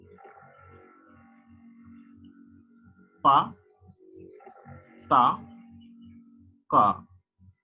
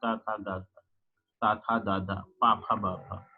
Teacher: वे ध्वनियां जिनके उच्चारण में वायु पूर्ण रूप से अवरुद्ध की जाती है, तत्पश्चात मार्ग अचानक खोल दिया जाता है, जिससे पीछे रुकी हुई वाक् ध्वनि तेजी के साथ निकलती है। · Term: स्टॉप प्लसिव साउंड